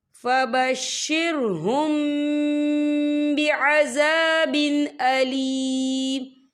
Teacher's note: یہاں میم ساکن ہے، میم ساکن کے بعد جو ہے با آ رہا ہے، تو یہاں پر اکفا شفوی ہوگا، اور ہم یہاں غنہ بھی کریں گے.